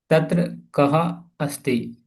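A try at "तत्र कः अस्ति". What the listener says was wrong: So don't tell ha, like kaha.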